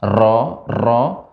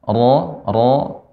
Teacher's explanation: getarannya sedikit dan halus · ro tidak boleh banyak getaran ro nah ini ini kurang tepat ro ro yang benar ro